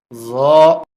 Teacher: জিহ্বার আগা উপরের দাঁতের আগায় লাগবে, নরম হবে, মোটা হবে।